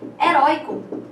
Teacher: Heróico não vai ter acento, por quê? Porque a sílaba mais forte, né, de heróico é a penúltima, né? Penúltima é paroxítona, não tem acento.